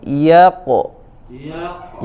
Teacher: Ya-nya tipis, qafnya tebal.